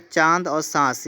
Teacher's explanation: अनुनासिक, जिसमें नाक और मुंह दोनों का प्रयोग यहाँ पर आपका हो जाता है